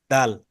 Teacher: দাল তো উচ্চারণ হয় জিহ্বার আগাটা উপরের দাঁতের গোড়ার সাথে লাগিয়ে